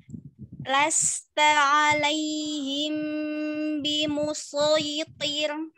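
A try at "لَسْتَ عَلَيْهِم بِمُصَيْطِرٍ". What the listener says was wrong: Bimusay. Tarik iya-nya, tarik linnya. Tarik sedikit lagi. Bimusaytir. Jangan dimatikan. Bimusaytir. Langsung. Bimusaytir.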